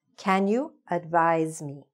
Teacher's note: i know it's written with an s but it's pronounced with a z sound